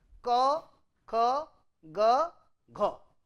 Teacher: So, difference is unvoiced, unaspirated, unvoiced, aspirated, voiced, unaspirated, voiced, aspirated, ka, kha, ga, gha. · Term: velar consonant